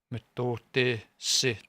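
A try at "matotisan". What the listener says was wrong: Yeah, just the A is a short.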